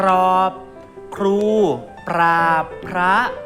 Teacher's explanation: ออกเสียงควบกันทั้งสองตัวมีรอเรือก็ต้องกระดกลิ้นด้วยนะครับ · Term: คำควบกล้ำแท้